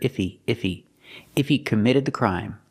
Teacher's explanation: He is not a stressed word. So sometimes you don't hear the H.